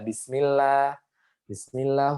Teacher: lam ini adalah aslinya huruf yang tipis